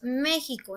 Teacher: Nosotros decimos México, entonces la sílaba más fuerte está en la me. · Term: sílaba tónica